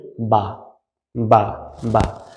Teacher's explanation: just একটু খেয়াল করুন তাহলেই বুঝতে পারবেন দুই ঠোঁটের ভিজা জায়গা হতে বা মানে ঠোটটা অলটাইম যে জায়গা ভিজা থাকে ওই জায়গা একত্রিত করে